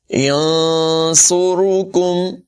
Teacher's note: یہاں پر اخفا کریں گے، صاد کی آواز پر ہوگی، را کو بھی پر پڑھیں گے، کاف کو باریک پڑھیں گے